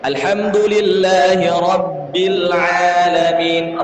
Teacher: Ba bertasdid sama dengan dal, menggema di dalam mulut.